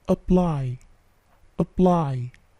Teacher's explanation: P-nya tidak plosive ya